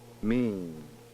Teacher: mean however the port is open throughout the entire production mean it appears that the velum does not have time to close for the vowel sound before it must again open for the final nasal consonant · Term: nasalization